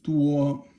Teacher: It means a lot, and that's first tone